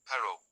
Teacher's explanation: A single r is lightly tapped